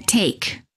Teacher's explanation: The lips are not rounded and they are relaxed and the tongue is tense, moving from mid-high position to high position.